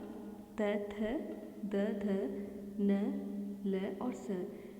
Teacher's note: इसके बाद त, थ, द, ध, न, ल और स, इन्हें उच्चारण करते समय हमारी जो जीभ है वो हमारे दांतों से टकराती है, दांतों को स्पर्श करती है, इसीलिए इन्हें दंत्य स्वर या व्यंजन कहा जाता है।